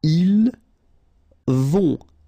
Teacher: Final T not pronounced.